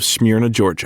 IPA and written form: smɜrnə, ˈʤɔrʤə (Smyrna, Georgia)